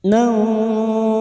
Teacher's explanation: Nun sukun atau tanwin yang bertemu dengan 15 huruf ini termasuk huruf sin. Nun sukun dibaca samar dan mendengung selama 3 harokat. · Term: ikfa hakiki